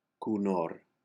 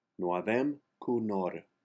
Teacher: The last word, conhort, you drop the two H's and the T as they are all silent. And since the accent is on the second syllable, the first O is pronounced like a U.